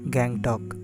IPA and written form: ˈɡæŋtɒk (Gangtok)